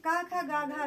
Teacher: जैसे का खा गा घा जो श्रेणी है का वर्ग का, इसको कंठ भी बोलते हैं